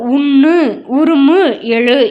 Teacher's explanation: மெல்லின எழுத்துக்களுடைய உகரமும் இடையின உகரமும் ஒரு மாத்திரை அளவில் ஒலிக்கக் கூடியதுதான் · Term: முற்றியல் உகரம்